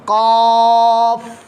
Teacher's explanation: قاف حروف مستعلیہ میں سے ہے, اس کی آواز پر آنی چاہیے یعنی موٹی آواز. فا پر قلقلہ نہیں کرنا, قاف یہ قلقلہ ہو گیا, قلقلہ نہیں کرنا.